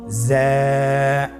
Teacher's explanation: জা হরফটির মাখরাজ আপনারা দেখতে পাচ্ছেন, জিহ্বার আগা সামনের নিচের 2 দাঁতের পেট ও আগার সঙ্গে লাগিয়ে উচ্চারিত হয়